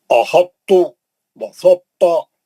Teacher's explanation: احطو بسطا تھوڑا تو کو موٹا کر کے پڑھنا